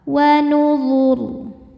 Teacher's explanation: Saat berhenti di ro-nya disukunkan dan dibaca secara tafkhim. Karena sebelum ro disukunkan ada baris dhammah, maka ro-nya tebal.